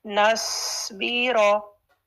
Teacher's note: सौद साकिन, सुकून से हैवी करना है इसको